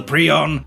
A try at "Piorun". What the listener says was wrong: porun p i o r u n porun not pre